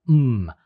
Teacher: manner so in the case of came you would transcribe mmm the voiced bilabial nasal